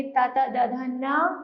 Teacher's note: ठीक है, आगे है तावर्ग, तावर्ग में आते ता ता दा धा ना, उच्चारण स्थान है दांत और नाम है दंत्य